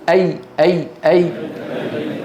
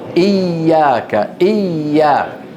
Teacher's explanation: وسط اللسان ارتفع لكن الطريق ايه مفتوح الصوت يمر · يرتفع وسط اللسان ولكن يبقى الطريق مفتوحا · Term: الياء